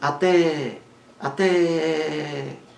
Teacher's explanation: Até é uma palavra oxítona. Sílaba mais forte é a última.